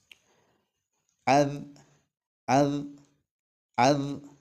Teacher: നാവിൻറെ തല മേലെ മുൻപല്ലിന്റെ അടിയിൽ വെച്ചുകൊണ്ടാണ് ദാൽ എന്നുള്ള അക്ഷരം ഉച്ചരിക്കേണ്ടത് · ബോധ്യപ്പെടണം എന്നുണ്ടെങ്കിൽ ദാൽ എന്നുള്ള അക്ഷരത്തിൽ സുക്കൂന് കൊടുത്ത് നമുക്കൊന്ന് പറഞ്ഞു നോക്കാം അദ് അപ്പൊ കാറ്റ് നടക്കുന്നില്ല കാറ്റ് വരുന്നില്ല പക്ഷേ ശബ്ദം നീളുന്നുണ്ട്